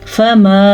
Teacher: یہ مد 2.5 سے 3 حرکات عربیہ کے برابر ہے